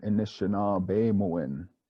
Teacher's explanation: we have a few short unstressed vowels like the first a the second I and then the O at the end there